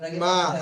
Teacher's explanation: মিমের উপরে আলিফ মাদ্দা, আলিফ মাদ্দাকে এক আলিফ পরিমাণ টান দিয়ে পড়তে হবে